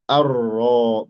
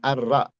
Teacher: kenapa tebal liannaha maftuhah karena dia maftuhah fathah ya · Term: ro mufakhamah